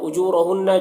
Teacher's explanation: जू में वाव मद्दा है, एक अलिफ के बराबर खींचेंगे, रा को पुर पढ़ेंगे, हुन्ना नून मुशद्दद गुन्ना होगा।